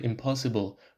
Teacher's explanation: Local assimilation concerns adjacent sounds that influence each other like in the word impossible where the n of the negative prefix in becomes m before p